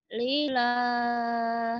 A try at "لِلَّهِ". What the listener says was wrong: Lillah bukan lillah. Lillah ada tasdid, ada tasdid. Lillah.